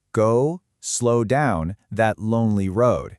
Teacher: you can actually feel those deep O sounds stretching out. This is called assonance or vowel rhyme.